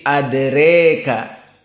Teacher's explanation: Hamzah dibaca dalam keadaan al-imalah al-kubra jadi adreka